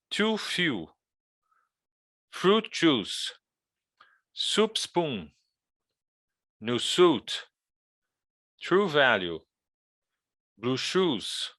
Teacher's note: you're going to make the sound very very close frontal and long